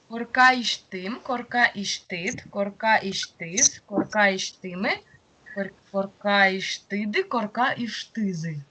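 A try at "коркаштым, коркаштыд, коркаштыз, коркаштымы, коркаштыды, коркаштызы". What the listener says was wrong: Тут на последний слог все-таки ударение, это даже северные делают. Да, это в глаголах только косячно.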